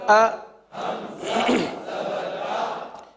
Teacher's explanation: حمزہ کی ادائیگی میں غلطی ہوتی ہے اس لیے تھوڑا سا توقف کے ساتھ پڑھا گیا